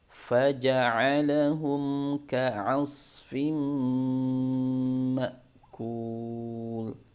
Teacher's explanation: Kalau dibaca ka asfim, maka itu huruf hamzah bukan huruf ain.